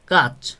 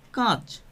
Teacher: অর্থাৎ কোনো নাসিক্য ব্যঞ্জনের প্রভাব ছাড়াই যখন কি করবে, একটা স্বরবর্ণ চেঞ্জ হয়ে মানে নিজে নিজেই একটা অনুনাসিক হয়ে যাবে, সেটাকে বলা হবে শতনাসিক্যী ভবন।